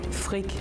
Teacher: Danish is saying the R in their throat a lot